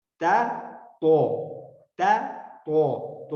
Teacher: تا ہی کی جگہ پہ منہ کو گول کریں گے تو تو ہو جائے گا